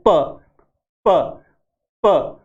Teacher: प बोलते हैं तो दो होठ बाई लेबियल, दो होठ काम आते हैं, प प प। और जब हम प बोलते हैं तो मुंह में पहले एयर इकट्ठा होती है, हवा इकट्ठा होती है, फिर एकदम विस्फोट के साथ बाहर निकलती है, प प।